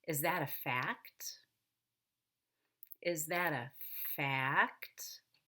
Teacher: So you'll need to divide that one syllable into two parts by stretching out the vowel and going down on the first half and up on the second half · It's actually a short A going down and a short E coming up.